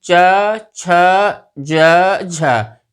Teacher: क्योंकि जब हम इनका उच्चारण करते हैं तो उच्चारण करते समय च, छ, ज, झ, इनका उच्चारण करते समय हमारी जो स्पर्श होता है तालु से, और तालु से स्पर्श होकर के जो हमारी वायु है उसमें घर्षण होता है, सीधे बाहर नहीं निकलती है, इसीलिए इनको हम स्पर्श संघर्षी व्यंजन कहते हैं।